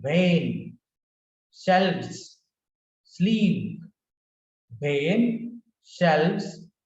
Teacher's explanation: V, lower lip, upper teeth.